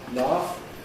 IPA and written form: lɑːf (laugh)